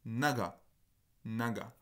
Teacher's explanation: Exactement la même voyelle que l'on avait dans la ligne juste au-dessus. Donc cette espèce de voyelle qui est un peu plus proche du schwa, qui est une sorte de A proche du schwa